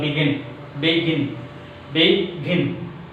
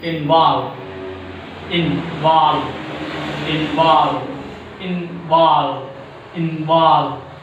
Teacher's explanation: There are two syllables, and the second syllable is prominent one. Second syllable is pronounced louder than the first syllable. So second syllable is a stressed syllable.